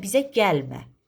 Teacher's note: gəlmə deyəndə vurğu gələ düşəcək